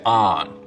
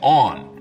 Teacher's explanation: north of this line most people say ahn rhymes with don south of it they say on rhymes with dawn